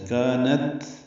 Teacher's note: کانت میں کاف باریک الف مدہ ہے، تا ساکن پہ ہمس ہے. کانت ہلکی سی سانس کی آواز جاری رہے گی، ہاں نہ بنے. کانت یہ نہ ہو.